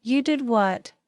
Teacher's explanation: For example, if you say, "You did what?" with a rising tone at the end, it shows surprise